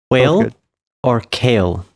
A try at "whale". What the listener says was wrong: Yeah, he likes to pronounce his H's before the W.